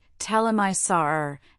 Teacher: Then there are the grammatical words like he, her, his, and have where in connected speech the H is frequently dropped. We say tell him I saw her instead of tell him I saw her.